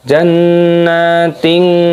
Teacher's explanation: ada hukum ikhfa disamarkan kasrah tanwin yang bertemu dengan huruf ta. Jannatin seperti itu.